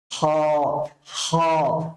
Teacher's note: করতে হবে বাতাসটাকে কণ্ঠটাকে উজার করে দিয়ে উচ্চারণ করতে হবে হা তারপর হ উচ্চারণ করার সময় কণ্ঠনালীকে ব্যবহার করতে হবে কণ্ঠনালীকে ব্যবহার করতে হবে বাট কণ্ঠনালীর শেষের অংশটাকে ব্যবহার করতে হবে